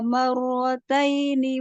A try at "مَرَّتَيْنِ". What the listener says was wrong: Marotai. Bukan tai. Kurang tipis. Marotaini. Tataini.